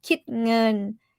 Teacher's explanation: kít, high tone, ngân, mid tone